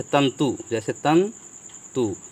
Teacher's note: उसी पर त पे लगाते हैं तो न का, जैसे तंतु, जैसे तंतु, तो यहाँ पर जो हम ये जो अनुस्वार लगाए हैं इसका जो उच्चारण होगा वो न से होगा